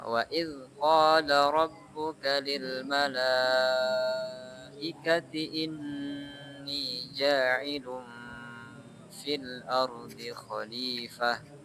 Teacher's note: Coba gunnahnya di nun tasdid, yaitu ditahan ya. Lebih ditahan, ditambah lagi tahannya.